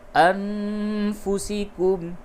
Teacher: نون ساکن کے بعد فا ہے، جگہ پہ اخفا ہوگا